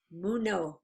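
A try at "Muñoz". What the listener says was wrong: Munoz. No, yeah, I think you've said it wrong all the time. You call him Munez, and I think it's Munoz.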